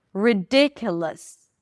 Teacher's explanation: the o us suffix is just a schwa sound and an s